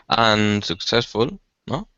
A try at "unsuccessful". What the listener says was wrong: But get the pronunciation right. Get the stress right. Successful. Unsuccessful or successful, unsuccessful? First syllable. So let's say those together. Successful, unsuccessful.